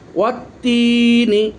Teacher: ওয়ার পরে আলিফ লাম লেখা হয়েছে কিন্তু লামের উচ্চারণ আসেনি, সরাসরি তার উচ্চারণ হয়েছে। লিখতে এসেছে কিন্তু উচ্চারণ হয়নি।